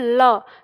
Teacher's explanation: तो ल जब हम बोलते हैं तो हमारी जीभ मुड़ के दंतमूल के पास होती है और जो हवा है वो जीभ के दोनों ओर से निकलती है, उसके पास से गुजरती है, तो आप इसे कह सकते हो कि ये पार्श्विक वर्ण कहलाता है।